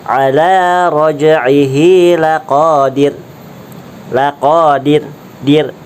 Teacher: Contoh, asalnya run dan harokat sebelumnya adalah di, harokatnya kasrah, maka dibacanya ra sukun karena waqaf itu dibaca tipis ra-nya.